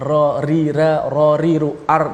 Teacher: Ra tu sebenarnya ra ri ra ri ru ar tu berada di hujung lidah dan hujung tu digetarkan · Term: huruf ra